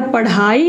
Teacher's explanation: समझ गए यह होता है उत्क्षिप्त ध्वनि